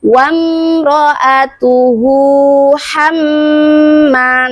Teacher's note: Ingat teman-teman, huruf mim bertasydid adalah termasuk huruf ghunah musyaddadah. Jadi dibaca dengung dua harakat.